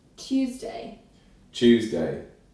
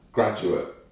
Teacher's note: Yod coalescence is just a fancy word for when you're taking a sound like Tuesday, which is technically what you're taught is the correct way, it's the traditional way to say it. But in modern RP, you'd turn the T into a ch sound